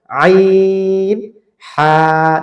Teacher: আইন হা হলো এই যে কণ্ঠনালীর মাঝখানে একটু চাপ দিয়ে বলবেন, বাট শক্ত না।